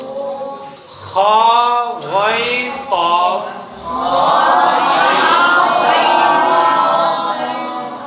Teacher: صرف زبان کی جڑ اٹھے تو سنگل موٹے ہوتے ہیں، جڑ بھی اٹھے زبان کا بیچ بھی اٹھے تو ڈبل موٹے ہوتے ہیں۔